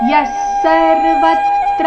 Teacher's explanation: ಸರ್ವತ್ರ ಮೇಲೆ ಆಘಾತ ಮುಂದೆ ತ್ರ ಬಂದ ಕಾರಣ